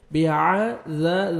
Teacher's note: ذال کو نرمی سے ادا کر کے 1 سیکنڈ آپ نے کھینچنا ہے, الف مد ہے